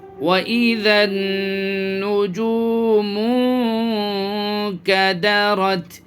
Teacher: یہ نون میں نون ساکن کے اندر جو ہے اخفا کریں گے، اخفا کا قاعدہ ہوگا، یہاں پہ آواز ناک میں چھپائیں گے۔